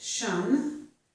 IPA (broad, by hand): ʃən